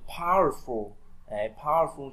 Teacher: trọng âm rơi âm đầu tiên nhá